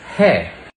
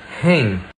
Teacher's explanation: In Hindi and Urdu, you just say "he". And if you want to make it plural, you just pronounce it with a nasal vowel, "hen". Pay attention to the difference between "he", is, and "hen", are.